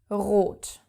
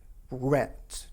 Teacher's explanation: It's in your throat, a guttural R. · you have to use the German R, the guttural R in the back of your throat